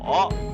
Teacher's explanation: I is 我 with a third tone, okay? Go down.